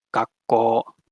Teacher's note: you hold the K sound for longer, and you hold the O sound for longer, and you can write it with that sort of 2 triangles, colon type symbol, gakko. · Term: gemination